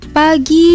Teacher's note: bila berada pada awal kata atau awal suku kata maka P diucapkan secara lepas